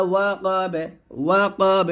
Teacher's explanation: এ বাটা কলকলা করতে হবে